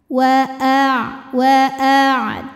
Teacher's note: ainnya tetap ada aliran ya tapi tidak sempurna ya karena Ain ini punya sifat namanya tawasud jadi jangan sampai suaranya tertahan